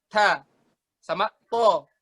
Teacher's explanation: Huruf ta sama to itu satu makhraj mereka. Huruf ta sama to satu makhraj di sini. Di bawah gigi seri atas.